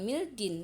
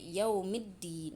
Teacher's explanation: Jadi cara pembacaannya itu bukan minal syaiton, tapi langsung dileburkan ke huruf syamsiyahnya, minasyaiton. Alif lamnya tidak dibaca jelas.